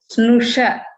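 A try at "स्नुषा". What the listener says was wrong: Susha, not Snusha. Susha.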